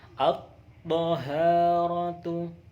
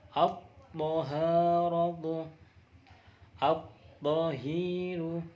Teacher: At-taharatu, tidak dibaca al-taharatu, jadi diidghamkan. Diidghamkan dari alnya dimasukkan ke huruf to. Jadi alnya tidak dibaca, langsung at-taharatu, at-tahiru. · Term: idgham syamsiyah